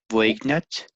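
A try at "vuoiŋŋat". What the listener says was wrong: Yeah, the G is not really pronounced. I would say voidnat. I would say it with a D sound instead. Voidnat, nat, voidnat. Voidnat. Voingat. Maybe they can say voingat.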